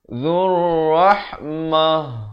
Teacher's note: Tapi bukan ha pedas ini, tetapi ha simpul itu yang makhrajnya di bawah, di pangkal kerongkong ini. Zurrahmah, bukan mah, tak betul ya, mah gitu. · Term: ta marbutah